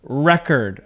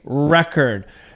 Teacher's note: The emphasis is at the beginning of the word.